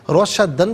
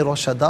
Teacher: روشدن پڑھیں گے، وقف کی صورت میں روشدا پڑھا جائے گا، دو زبر کی تنوین وقف میں الف سے چینج ہو جاتی ہے